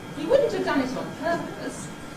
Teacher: It's like a falling head but a little bit delayed